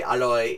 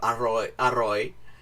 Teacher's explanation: sometimes they will say more of a l sound than a r sound, so they say aloi instead of aroi